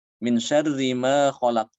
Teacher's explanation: Ketika dia diwasolkan, huruf ro-nya kan dibaca tipis.